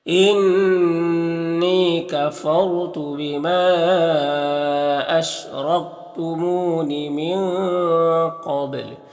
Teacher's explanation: انی نون مشدد غنہ ہوگا، یا مدہ ایک الف کے برابر کھینچیں گے، را ساکن سے پہلے فا کے اوپر زبر تو را کو پر پڑھیں گے۔ · را ساکن سے پہلے فا کے اوپر زبر تو را کو پر پڑھیں گے۔ بما میں مد منفصل ہے، یہاں پر را کے اوپر زبر اور را کو پر پڑھیں گے، منہ میں واو مدہ ایک الف کے برابر کھینچیں گے، یہاں پر نون میں اخفا ہوگا، قاف حروف مستعلیہ میں سے پر پڑھیں گے، با میں قلقلہ ہوگا، تو اس طرح سے پڑھیں گے۔